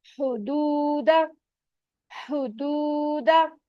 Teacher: हा पे पेश है, इस वक्त हम गोल हो जाएंगे। वाव साकिन है, उससे पहले पेश आ रहा है, वाव मद हो रही है, टू काउंट